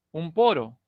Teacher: Cuando el fonema nasal lo ubicamos delante de una consonante bilabial, automáticamente cambia a un fonema, y en este caso a un fono también bilabial